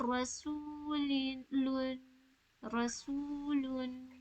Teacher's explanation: واؤ حرف مدہ ہے، یعنی 2 سیکنڈز کے لیے کھینچیں گے